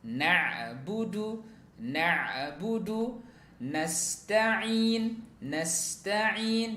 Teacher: sempurnakan huruf ainnya. Na'budu, na'budu, nasta'in, nasta'in, ya, yang keluar dari aqsal halqi